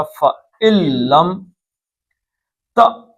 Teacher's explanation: کیونکہ نون ساکن کے بعد لام آ جائے تو نون نہیں، یہاں سے سیدھا لام پہ جائے گا